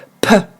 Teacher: En anglais, il y a comme une mini-explosion, comme si vous cherchiez à postillonner. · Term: plosive